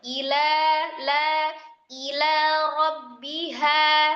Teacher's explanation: Lanya biasa aja, jangan ila, enggak, ila atau illa, suka ditasdid gitu, lamnya jangan tebal.